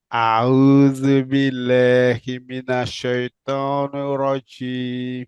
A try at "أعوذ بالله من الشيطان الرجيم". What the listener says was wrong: Do the kasra. Don't say no rajim. Shaitani. Hear the knee with your ear. And not join with ra shadda.